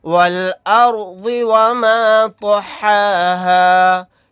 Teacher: والارض وما طحاها، واو لام زبر ول، حمزہ را زبر ار، والار ضاد زیر ضی، والارض واو زبر و، میم الف زبر ما، وما طا زبر طا، حا کھڑا زبر حا، طحا ہا الف زبر ہا، طحاها، والارض وما طحاها۔ یہاں پر اس رائے ساکنہ کو موٹا یعنی پر پڑھیں گے کیونکہ رائے ساکنہ سے پہلے زبر ہے، پھر یہاں پر طوا کو موٹا یعنی پر پڑھیں گے، اسی طرح سے ضاد کو بھی موٹا یعنی پر پڑھیں گے۔